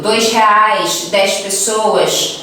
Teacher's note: Aquele S chiado bem forte, que seria como, por exemplo, R$2, 10 pessoas, né?